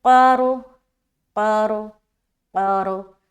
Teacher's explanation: قاف بھی موٹا اور را بھی موٹا کیونکہ را سے پہلے زبر ہے